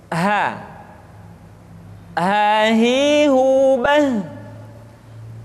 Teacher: huruf H dikeluarkan dari tenggorokan yang terjauh, sama seperti kita mengucapkan huruf A.